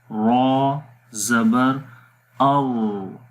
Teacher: نہ تو مکمل طور پر را کی آواز مخرج میں بند ہو رہی ہے، نہ تو یعنی کہ شدت بھی نہیں ہے، اور نہ ہی مکمل طور پر آواز مخرج میں جاری ہو رہی ہے، تو درمیانی پوزیشن ہے توسط کی، تو اس سوراخ سے آواز نکل بھی جاتی ہے اور بند بلاکیج بھی رہتی ہے لیکن آواز بھی نکلتی ہے، تو اس کو جو ہے وہ توسط بولتے ہیں۔